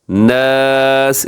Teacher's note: ناس اس میں الف بھی باریک ہے، نون بھی باریک ہے، آخر میں سین ہے، تو سین میں سیٹی کی آواز ہوتی ہے، اور کوشش کریں کہ اس کو قلقلہ نہ کریں، اکثر بچے یہاں قلقلہ کر دیتے ہیں۔